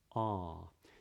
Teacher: in that sound the back of the tongue is really low and then just see if you can keep it low and